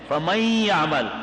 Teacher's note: میم کو یہاں سے ملاتے ہیں نا، تو نون لکھنے میں آیا ہے، پڑھنے میں نہیں آتا. جب پڑھنے میں نہیں آتا تو جوڑ میں بھی اس کا نام نہیں یاد کریں گے، تو میم یا سے ملائیں گے.